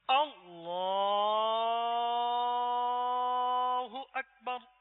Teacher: کھینچنے میں صرف ایک ہی مقام ہے جسے کھینچا جا سکتا ہے، وہ لفظ اللہ کی لام